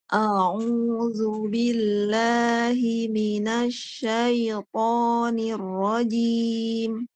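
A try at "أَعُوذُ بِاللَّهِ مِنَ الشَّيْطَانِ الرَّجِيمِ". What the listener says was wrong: Masih kurang tepat Ibu. Ibu tuh memanjang sya-nya. Kan tadi bacanya tuh syai. Bukan syaiton, bukan.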